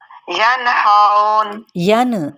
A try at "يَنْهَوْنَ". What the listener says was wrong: ین کر کے ساؤنڈ نہیں آنی چاہیے نا، ین آپ نے زبان کو جہاں پہ نون کا مخرج ہے وہیں پہ ٹکا کے پھر اگلے حرف کی جانب بڑھنا ہے، ینہون،